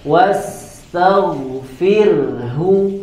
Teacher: di situ ro-nya dibaca tipis karena sebelumnya ada kasroh dan kasrohnya adalah kasroh asli